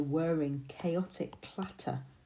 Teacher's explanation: I'm picking up the hard C sounds and the T, that consonance